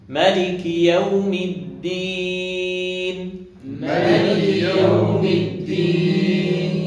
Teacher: ما تضغطش على حرف الميم، مش مالك، ما بالتخفيف.